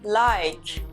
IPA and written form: laɪk (पसंद करें)